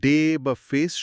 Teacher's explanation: ডে বা ফেস শব্দে আমরা যে এই ধ্বনিটা করি, তার আইপিএ চিহ্ন হল ই আই। এখানে আসলে দুটো সাউন্ড ই এবং আই একসাথে মিশে গেছে। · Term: ডিফথংস